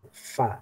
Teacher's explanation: bibir bagian bawah yang bertemu dengan gigi seri bagian atas. Bibir bagian bawah bagian dalam ya. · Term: huruf fa